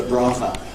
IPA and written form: ˈbrɑːvə (Brava)